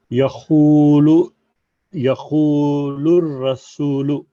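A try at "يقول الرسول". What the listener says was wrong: सूर खींच रहे हैं। यक़ूलुर रसूलु, रसूलु।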